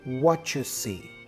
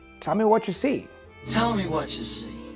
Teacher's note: The T for what combined with the Y for you has this ch sound.